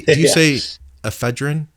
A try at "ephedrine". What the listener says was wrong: Ephedrine. So you're putting more enunciation on the F.